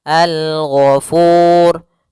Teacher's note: yang diwakafkan adalah huruf ro maka kita ada tambahan hukum yaitu hukum ro tafkhim ro yang dia dibaca dengan tebal